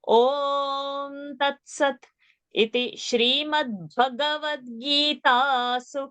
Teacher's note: Iti is short and Shri is Dirgha.